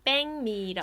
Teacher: since the 기역 is followed by 미음, the back part becomes 뱅